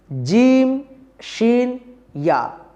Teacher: এই তিনটি অক্ষরের মাখরাজ হলো জিহুবার মাঝখান তার বরাবর উপরের শক্ত তালুর সাথে লাগিয়ে এই তিনটি বর্ণ উচ্চারিত করতে হয় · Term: আল হুরুফুশ সাজারিয়া